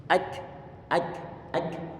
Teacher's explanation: Setelah syiddah kita berikan, kita hentikan suara kaf, baru kemudian hamsnya kita berikan.